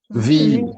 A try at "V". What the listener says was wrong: bukan wih. Oke, cara bacanya itu tebel di bibir. Kalau bisa bibirnya bergetar, pasti geli ya. V. Ngerasa nggak bibirnya getar? V. V. V. Rasa ya. Tapi jangan disengaja juga, jangan dibikin V. Enggak kayak gitu. V. V. Dah kayak gitu ya contohnya. V.